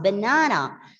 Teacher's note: banana has got three syllables and you know the second syllable is stressed